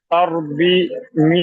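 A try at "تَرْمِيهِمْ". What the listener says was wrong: একটা ভাই বি বলেন না মি বলেন ভাই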